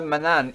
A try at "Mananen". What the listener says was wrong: Yes, you keep forgetting a syllable.